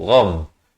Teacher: ghain di hujung kerongko